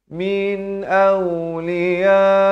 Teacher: Di sini izhar halqi. Sebut saja min, jangan panjang. Sempurnakan saja nun itu terus masuk.